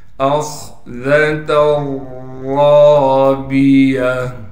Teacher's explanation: تا پر دو تنوین ہونے کی وجہ سے پھر ہم تا کو را کے ساتھ ادغام کر دیں گے اور تنوین کو ختم کر دیں گے، را کو موٹا کر کے پڑھا جائے گا، اس لیے کہ را پر زبر ہے اور را کے بعد الف ہونے کی وجہ سے را کو ایک الف کی مقدار کھینچیں گے · أَخْذَتَ الرَّابِيَةِ، حمزہ کو خا سے ملائیں گے، اس لیے کہ خا ساکن ہے اور خا کو موٹا کر کے پڑھیں گے، ذال کو باریک کر کے پڑھا جائے گا۔